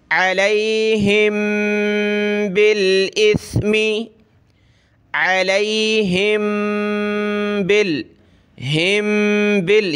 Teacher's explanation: یہ با جو ہے لام سے پلس ہوگا، الف کو ہم نے نہیں پڑھنا. با لام زیر بل، حمزہ ثا زیر اس، بل اس. · دیکھیں میم، میم کے اوپر یہ جزم تو کیا بنا، میم ساکن. میم ساکن کے بعد با آ جائے تو وہاں ہم نے ناک میں آواز پیدا کرنی ہوتی ہے، میم کا اخفا ہوتا ہے